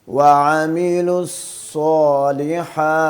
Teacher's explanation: صاد کو موٹا پڑھنا ہے اور اس کو ظاہر کر کے پڑھنا ہے